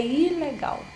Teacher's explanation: E também o acento que é o acento intelectual, que acentua-se também por um motivo também de insistência, de destaque, acentua a sílaba inicial. · Sabemos que a sílaba tônica, né, é a última, mas ao pronunciar essa palavra num determinado contexto, para enfatizar, para destacar, é muito comum que seja a primeira